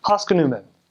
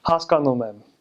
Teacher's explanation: but in Armenian, every syllable is like equal length.